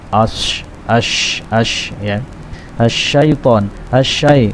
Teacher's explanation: Letak huruf shin adalah di tengah-tengah lidah, tengah-tengah lisan, menempel pada langit-langit.